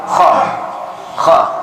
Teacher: KHO KHO itu ditangkap tenggorokan tenggorokan gitu kita sempitkan hoh hoh Kalau ha itu disini ha ho ha ha didada